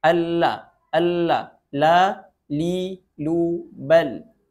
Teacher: huruf lam itu makhrajnya adalah sisi atau tepi lidah bagian bawah hingga ke akhir hujung lidah